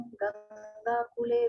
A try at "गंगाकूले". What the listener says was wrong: कुले मत पढ़िए, ए कुले नहीं, कूले। कूले, कौ में बड़ी ऊ की मात्रा है।